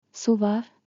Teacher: With a rising tone turns into a question